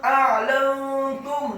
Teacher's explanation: A'lantum, kemudian lamnya dibaca fathah satu harokat, nun yang sukun. A'lantum, nun yang sukun bertemu dengan huruf ta yang dhammah, hukum bacaannya adalah ikhfa